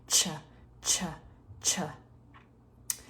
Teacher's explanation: we touch the tongue on the alveolar Ridge and then we pull the tongue back it's a voiceless sound sure but we turn the voice back on for that schwa that lazy vowel at the end cha cha cha before that